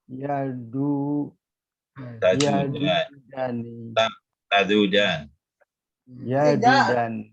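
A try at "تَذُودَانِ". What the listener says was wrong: tadudan bukan yadudan.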